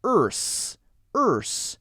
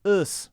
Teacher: your tongue is curled back and up and then flicks forward into the s